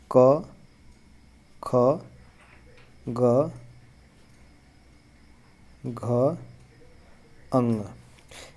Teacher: इन चारों में जो ख और घ है यह महाप्राण है